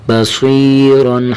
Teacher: با زبر با، صاد یا زیر سی، بصری، را دو زبر رن، بصیرا حرف صاد کو موٹا کرنا ہے اور حرف را یہ دونوں کو موٹا کر کے پڑھیں گے